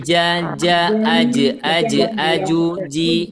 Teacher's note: huruf Jim pertama huruf Jim ini makhrajnya ada di tengah lidah ya